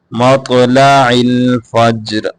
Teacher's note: تو کو موٹا کرنا ہے، فجر جیم کے اوپر قلقلہ کرنا ہے